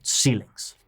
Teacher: two-syllable words, stress on the first syllable